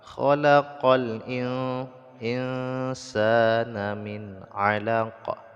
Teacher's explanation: kedua ada Nun yang sukun bertbut dengan huruf Sin dibaca ikhfa ikhfa itu disamarkan ataupun disembunyikan bunyi nun mati ke dalam huruf Sin